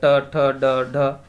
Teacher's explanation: ठीक है, फिर उसके बाद आ जाता है ये ड, ड का उच्चारण स्थान कौन सा होगा, ट ठ ड ढ, तो ठीक है, टा वर्ग वाला, तो इसका उच्चारण स्थान होगा मूर्धा से होगा।